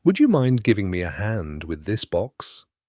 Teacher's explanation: Notice the rising tone on mind. That softens it. That does sound polite without being sorry.